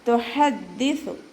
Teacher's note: ഹ തൊണ്ടയുടെ മധ്യഭാഗം വസത്തുൽ ഹൽക്കിൽ നിന്നാണ് പുറപ്പെടുന്നത്, അതിൻ്റെ സൗണ്ട് ക്ലിയർ ആക്കുക.